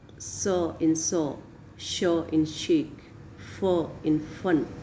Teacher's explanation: so air is passing very smoothly and voiceless sounds are produced all initial sounds in the words so in saw show in shake for in fun are voiceless